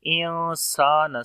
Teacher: نون ساکن کے بعد سین آ گیا، اخفا کریں گے لائٹ والا ، انسان، سین کو لمبا کریں گے، الف مدہ ہے، انسان